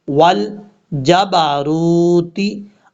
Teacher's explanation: یہ واو مدہ ہے، ایک الف کی مقدار، اس کو لمبا کر کے پڑھا جائے گا